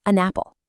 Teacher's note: The sounds just blend together and it becomes an apple. that N sound just kind of hops over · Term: linking